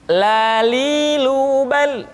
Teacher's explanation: Selanjutnya huruf la diucapkan dengan mengangkat ujung lidah kita, dengan disentuhkan dengan langit-langit.